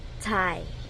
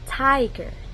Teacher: In the first syllable, which is tai, the vowel I is at the end of the syllable, making it an open syllable. So, since there's no consonant closing the first syllable tai, we typically use its long sound, like tie. That's why it is read as tiger.